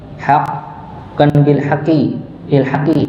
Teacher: Dan dia bertasydid, maka dinabarkan ya. Nabar itu apa? Hentakan ya. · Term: huruf qaf